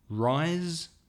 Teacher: And rise, the sun rises, has vibration from the vocal cords.